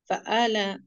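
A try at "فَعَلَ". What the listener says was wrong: फआला, आइन के आवाज भी आना है ना। फआला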